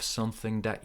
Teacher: You have to have something that, connection here. There is no ing, it's just n, and there is no th, it becomes n again. It's like one long n connecting, linking those two words.